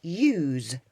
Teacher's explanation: This time we've got the 2 C's, we're allowed to put them together to make the S, so it becomes the word use. So you've got the S sounding like a Z in there, so it's use.